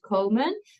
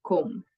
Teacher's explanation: you do hear the long sound, komen, but we then shorten it to the kom